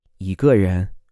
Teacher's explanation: For example, a person would be 一 个 人, and obviously the tone changes in this. The tone of the E changes to a second tone in this case, even though it's written with a first tone.